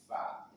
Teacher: Ada huruf fa yang dikeluarkan dari ujung gigi di atas bertemu dengan paruh bibir bagian bawah.